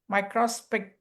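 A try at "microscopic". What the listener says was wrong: மைக்ரோ வந்து இப்ப நம்ம ஸ்ட்ரெஸ் பண்றோம், கிடையாது அது. மைக்ரோஸ்கோபிக். மைக்ரோஸ்கோபிக். அந்த மைக்ரோ பண்ணிடணும். ஆனா மைக்ரோவை மேக்ரோ பண்ணிடுறோம்.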